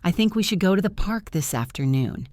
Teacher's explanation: The words think, go, park, and afternoon were a little louder, a little longer. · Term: stress pattern